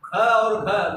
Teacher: ख और घ महाप्राण है, इसको बोलने से श्वास ज्यादा निकलता है।